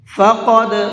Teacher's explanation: قاف کو منہ بھر کے پڑھیں گے